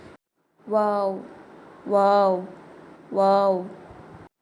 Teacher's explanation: உதடை வந்து வட்டமா நம்ம வச்சுக்கிட்டு அதுக்கப்புறம் அப்புறம் வா அப்படின்னு சொல்லி அந்த உதடு வந்து நம்ம பிரிக்கணும்